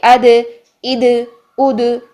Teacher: दाल साकिन में आवाज को हिलाएंगे, सांस तो ऑटोमेटिकली बंद होगा, आवाज को हिला देंगे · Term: कलकला